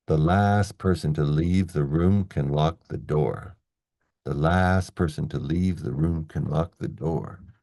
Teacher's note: We have two stress syllables in a row. So, the first one has to be a lot longer than you think.